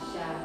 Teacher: Ya, sya. Kemudian dibantu dengan sifat huruf sya yaitu tafasyi menyebar sya. Jadi kalau kita praktekkan dengan ash itu berbunyi ada tafasyi menyebar bunyi sya.